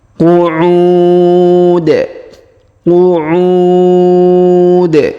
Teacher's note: terdapat wau sukun sebelum huruf pemberhentian dan huruf pemberhentian di sini huruf Dun kita sukunkan sehingga kita baca pantul